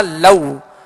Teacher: अब लऊ यहाँ वो लीन है, लिहाजा नरमी के साथ अदा करेंगे, इसमें झटका भी पैदा ना हो और मजहूल भी अदा ना हो।